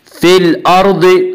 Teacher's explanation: अल अर्द की रा को पुर पढ़ेंगे।